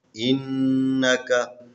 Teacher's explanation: الف زیر نون ان، نون زبر نا، ان کاف زبر کا، ان کا. یہاں پر نون مشدد ہیں، اس کے اوپر غنہ کرنا ہے